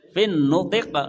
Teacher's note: Fin nutiq ya, fin kan karena nutqi kasrohnya pindah ke to, jadi fin nutiq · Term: cara waqaf